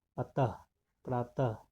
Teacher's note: अह का उच्चारण हल्के ह की तरह होता है